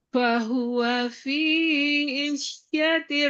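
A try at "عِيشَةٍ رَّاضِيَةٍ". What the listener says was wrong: kurang panjang. Isyatir radiyah. Masih kurang satu harokat i. Fahuwa fi isyatir radiyah.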